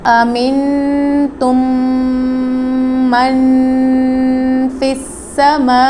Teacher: من میں بھی غنہ ہوگا کیونکہ نون ساکن کے بعد حروف اخفاء میں سے آ گیا ہے